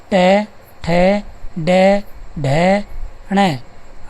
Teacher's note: ट ठ ड ढ ण ण ढ ऋ स र। उच्चारण स्थान आ जाएगा मूर्धा। और ध्वनि का नाम आ जाएगा मूर्धन्य।